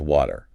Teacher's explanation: If you go to certain parts of London, the speaker might drop the T sound entirely, replacing it with what's called a glottal stop. Which is like a little catch in the throat, right?